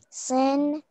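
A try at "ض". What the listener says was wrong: It's not sin, that's a dod. Din. Din.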